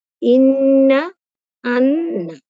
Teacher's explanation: নাকের বাঁশি থেকে গুন্না উচ্চারিত হয়